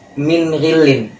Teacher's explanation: Jadi ketika min nun sukun bertemu dengan gha, maka bacaannya adalah min ghilin. Jadi sesuai dengan kaidahnya tidak ada dengung, maka dibacanya langsung, transisinya cepat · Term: izhar halki